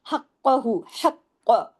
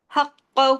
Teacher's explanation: وا ایک حرکت، وآتو، یہ دونوں دو دو حرکات، حقہ، حق، قاف کو سختی سے جوڑنا ہے، ڈبل قاف ہے یہاں پر ، حقہ، ہیوی بھی کرنا ہے کیونکہ موٹے حروف میں سے